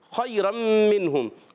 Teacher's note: خا حرف مستعلیہ میں سے ہے، حلق کے اوپر والے حصے سے بھی ادا ہوتا ہے، حرف حلقی میں سے بھی ہے، اور یا ساکن سے پہلے زبر آ جائے یا لین ہوتا ہے، نرمی سے ادا کریں گے۔